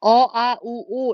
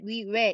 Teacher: 오 이런 애들은 뒤쪽에서 발음이 되고요. 위 이런 애들은 앞쪽에서 발음이 되게 됩니다.